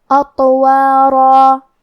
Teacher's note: کلمت اطوارا یہاں حرف الطو ہے اور طو حروف تفخیم میں سے ہے، تو ہم یہ حرف کو بھاری آواز میں اور منہ پھلا کے پڑھیں گے، اور کیونکہ اس پہ جزم ہے اور طا حروف القلقلہ میں سے ہے تو ہمیں یہ حرف کو ہلاتے ہوئے یہ کلمہ کو پڑھنا ہے.